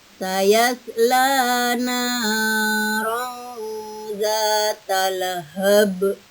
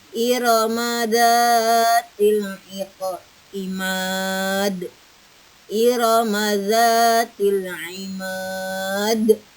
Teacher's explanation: Lahab itu harus besar pantulannya. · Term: qalqalah kubro